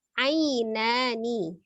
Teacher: kalau misalnya dia di tengah-tengah di wasal ainani, maka ainnya pendek ya. Tapi harus jelas ya sukunnya berbunyi i. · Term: madlin